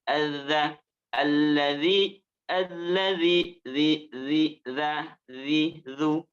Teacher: Sedangkan huruf yang ketiganya ini, ketiganya sama-sama ujung lidahnya menempel kepada ujung gigi sari atas. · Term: zal